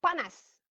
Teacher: A mengikuti bunyi ne. Bila A mengikuti bunyi ne, A itu ada tempias bunyi nasal tu dapat dekat A.